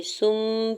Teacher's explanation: نون کی آواز کو میم میں بدل کے پڑھیں گے، سم پڑھیں گے، ٹھیک ہے، سن نہیں پڑھنا۔ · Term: اقلاب